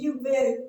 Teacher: கீழ் உதடும் மேல்வாய் பல்லும் இணைவதால் பிறக்கும் எழுத்து